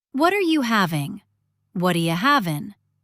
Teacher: The G drops off having in casual speech.